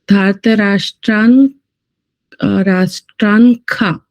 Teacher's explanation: ખકાર થશે વિસર્ગનો ઉચ્ચાર